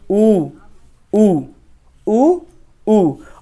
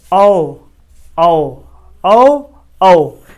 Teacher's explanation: जिन स्वरों का उच्चारण करते समय हमारा ओठ गोलाकार होता है उन स्वरों को हम वृत्तमुखी स्वर कहते हैं।